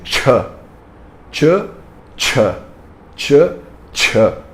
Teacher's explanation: o ch tem som de tchan tchan tchan tchan com pouco ar